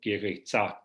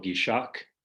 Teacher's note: if you have a noun that ends in a, it will still take as its plural marker the old classical Armenian aspirated K. So for example, from Yegeretzi for church, in his variety, you get giritza for church, and then plural giritzak, not giritza ner.